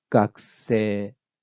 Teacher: so the pitch goes like this cox say it goes low high high and high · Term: pitch accents